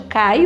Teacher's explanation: o A tem mais o som mais alto do que o I